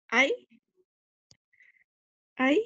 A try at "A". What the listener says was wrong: Ey. La A es ey. La I es I.